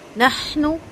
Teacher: ہا کی آواز کلیئر آئے گی حمز کے ساتھ اور نون کا پیش بالکل بھی لمبا نہیں ہوگا